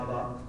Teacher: دونوں ہونٹوں کے اندر والا حصہ ملنے سے با بنے